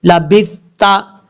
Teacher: سا جو ہے بغیر سیٹی کے ساتھ پڑھا جائے گا